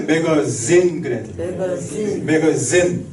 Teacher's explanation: 영어에서는 이 즈를 어떻게 발음하냐면 윗니 아랫니를 딱 하고 이거를 떨어요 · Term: 영어의 Z 발음